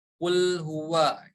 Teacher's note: memonyongkan kedua bibir kemudian kita bertemu dengan huruf wau huruf wau tempat keluarnya dari as-syafatain kedua bibir kita